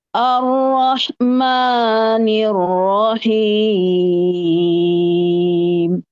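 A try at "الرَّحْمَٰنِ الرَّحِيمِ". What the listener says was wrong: daftar dulu daftar jangan terlalu turun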